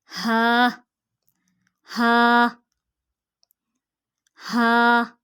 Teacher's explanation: हलक के ऊपर वाले हिस्से से अदा होता है। हलक के ऊपर वाले हिस्से से।